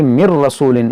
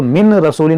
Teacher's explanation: نون ساکن کے بعد را ہے تو یہاں پر بھی ادغام ہوگا بغیر غنہ کے